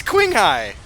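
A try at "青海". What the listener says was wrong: It didn't sound like Quing. It sounded like Quay.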